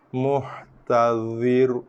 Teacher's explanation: Dha tebal, ra pun ikut sama tebal, terbawa-bawa, terseret, terjebak sama dalam ketebalan dha.